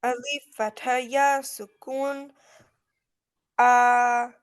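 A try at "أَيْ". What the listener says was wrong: No, you're not reading with Ya. Again, try again.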